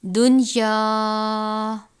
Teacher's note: لام اور را اس پر غنہ نہیں کرتے، باقی 4 حروف پر غنہ ہوتا ہے، لیکن یہاں پر نون ساکن کے بعد یا اسی کلمے میں آیا ہے جس وجہ سے غنہ نہیں بلکہ اظہار مطلق ہوگا